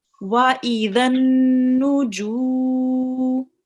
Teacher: Okay, and we will be pressing hard on it because it's mushaddad. Right, and we have waw mad here. So this will be prolonged for 2 seconds only.